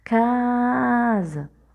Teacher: a sílaba tônica da palavra casa é o cá